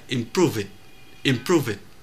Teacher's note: chữ V đó luyến sang chữ Y thành là prove it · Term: luyến âm